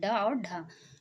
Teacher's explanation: उत्क्षिप्त व्यंजन। जीवा नोक वत्सर्य अथवा कठोर तालु के टकराव से उत्पन्न ध्वनि